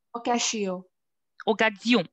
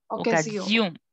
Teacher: because the S is between two vowels, so it's okay. The pronunciation turns to be Z.